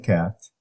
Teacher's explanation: So, a, as in cat, is a low front, lax, unrounded.